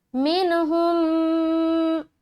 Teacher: منہم، دیکھیے منہم یہاں نون ظاہر کر کے جلدی نکل رہا ہے. یہاں پر اگر کوئی کر دے من، غلط ہو جائے گا. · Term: اظہار